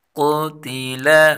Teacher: قاف کو پر پڑھیں گے، تا اور لام دونوں باریک حروف ہیں ، ان کو باریک پڑھیں گے، قتل، خا پیش خو، لام